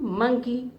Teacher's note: होंठ बंद करके एम से मंकी